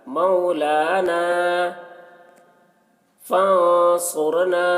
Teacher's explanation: नून में इख्फ़ा करेंगे, नून हुर्फ़ इख्फ़ा में से साद है